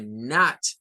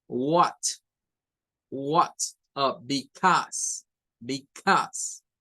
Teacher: un sonido que es una mezcla entre una A y una O, como not, que es la que decíamos que comenzábamos sacando como la A, pero termina siendo una O, o como en what, because, o sea, ese es mezclado realmente, es mezclado una A con una O.